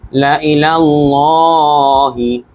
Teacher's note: আল্লাহ শব্দের আগে জবর থাকার কারণে কিন্তু আল্লাহ উচ্চারণটা মোটা হয়েছে লামের